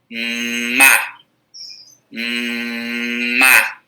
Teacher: Por quê? Porque para eu produzir o som representado pela letra M, eu preciso unir os meus 2 lábios. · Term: fonema bilabial